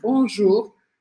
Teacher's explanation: E aqui a questão é que eu vou usar o U do português mesmo e um R bem arranhado